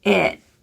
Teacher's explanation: The T's at ends of phrases, you can either fully just let them out or release them using your tongue tip, or you can choose to use a glottal stop T.